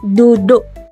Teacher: Perendahan vokal ialah proses vokal tinggi menjadi vokal rendah. Dalam dialek Perak, vokal tinggi E dan U mengalami perendahan vokal kepada vokal A dan O. Apabila vokal tinggi itu berada pada suku kata tertutup di akhir kata, contoh perkataan duduk dalam dialek perak duduk.